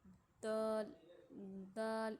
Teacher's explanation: دال میں تھوڑی سی گونجتی ہے